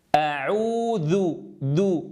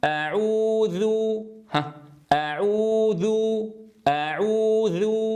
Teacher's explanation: لكن لو قلت أعوذ، أعوذ، أعوذ، انظروا الصوت الثاني الذي أرجع فيه شيئا ما إلى مخرج الذال يكون الصوت فيه أفصح.